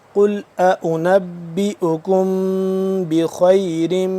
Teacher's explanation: मीम साकिन के बाद बा आ गया तो यहाँ पे हम इख्फा करेंगे, यानी कि थोड़ी देर के लिए आवाज़ को नाक के अंदर ले जाकर पढ़ेंगे